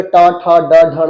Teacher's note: टॉ बोलोगे तो जीभ मुड़ जाती है। बोलो ट ठ ड ढ, ऊपर हल्को टच होते हुए जीभ मुड़ जाएगी, है या नहीं?